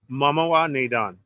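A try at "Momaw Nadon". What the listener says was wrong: Mama Nadan. I feel like there's an extra syllable.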